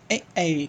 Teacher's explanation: ए ऐ कंठ। कंठ के साथ और तालव्य भी दोनों मिला दे रहे हैं। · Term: कंठ तालव्य